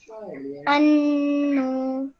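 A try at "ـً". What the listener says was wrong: Okay, we're not producing a noon sound, we're producing a nasal sound. Okay, noon sound would be like anu. Okay, that would be a noon sound. But we're not producing a noon sound, we're just producing a nasal sound, which means we're just making a sound from our nose.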